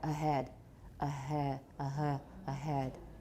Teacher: it's made with the vocal folds slightly apart along the entire length but still continuing to vibrate · Two voiced sounds, vowels. So if you put a h between two vowels, the h is probably going to be partially voiced, right? So they're continuing to vibrate, the vocal folds, as though they were waving in the breeze. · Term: voiced H